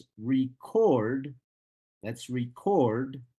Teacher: I'm talking about a noun which is record and not about the verb which is record the second syllable is stressed